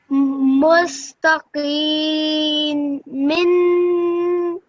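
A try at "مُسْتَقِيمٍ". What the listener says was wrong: Much better. Excellent.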